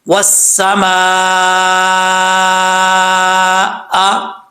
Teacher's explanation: مد متصل ہے یہاں پہ 3 سے 5 الف کے برابر اس کو لمبا کر سکتے ہیں